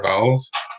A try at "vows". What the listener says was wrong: It sounded like you said vowels.